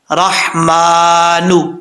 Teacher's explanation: را کے بعد ہا ہے، ہا بریک ہے، اس کو بھاری ساؤنڈ کے ساتھ نہیں پڑھنا